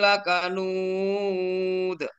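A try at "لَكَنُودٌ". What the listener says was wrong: Maaf, lakanud. Lebih tinggi lagi. Lakanud.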